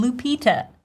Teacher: The stress goes on the second syllable, P, long E sound